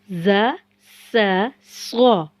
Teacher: जुबान की नोक को सामने के ऊपरी और निचले दांतों के किनारों से लगाकर अदा करना है। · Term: सीटी वाले हुरूफ